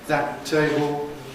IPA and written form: ˌðæt̚ ˈteɪbl̩ (that table)